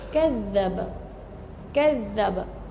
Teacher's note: bila kita nak lepaskan qqalah dia tu kita pegang dulu pada makhraj huruf tu dan kita pegang dalam dalam tempoh dua harakat baru lepaskan lantunan dia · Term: qqalah Akbar